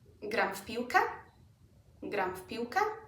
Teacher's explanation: W becomes unvoiced, it becomes an F.